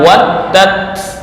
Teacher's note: Tapi ketika berhenti di waddat harus dibaca waddat bukan waddah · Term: wakaf